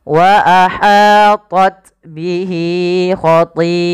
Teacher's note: panjangkan lafal hi 2 harakat karena ia mad silah qasirah, ditandai dengan ha dhamir.